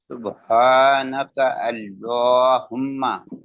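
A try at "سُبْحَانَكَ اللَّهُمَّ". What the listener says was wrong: نہیں سبحانک نہیں, ایک منٹ, نہیں, آپ نے پڑھا سبحانک اللہم. اللہ نہیں, یا تو یہ اللہم, یا سبحانک کا بھی پڑھا آپ نے, اللہم اللہ.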